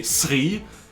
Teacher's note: of like set yeah because we can't pronounce the ch yeah so we just say s because that sound is not in our native language